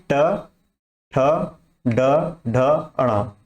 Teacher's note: ये लाइन होती है मूर्धा। मूर्धा का मतलब है जब भी हम बोलते हैं ट ठ ड ढ अड़ा तो हम अपने जीभ को ऊपर की ओर थोड़ा सा फोल्ड करते हैं